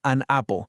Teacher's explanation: La N funciona como un puentecito que conecta los sonidos y hace que todo fluya.